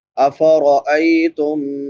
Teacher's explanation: ای یا لین ہے، یا ساکن ما قبل فتحہ یعنی زبر ہے، اس کو نرمی سے پڑھیں گے۔